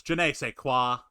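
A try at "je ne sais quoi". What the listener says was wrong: you don't pronounce it like a hard j you pronounce it like je nei se quoi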